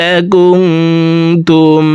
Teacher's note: ভিতরে একটি হরফ তা আসছে, এই কারণে এই নুন সাকিনকে নাকের ভিতরে লুকাইয়া গুন্নার সহিত পড়ব